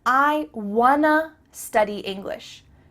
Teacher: Here we're changing want to to wanna. Again the word to changes to a.